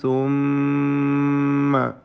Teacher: സുമ്മയിലെ ഷദ്ദുള്ള മീമിനെ മണിക്കണം, മീം മുഷദ്ദദ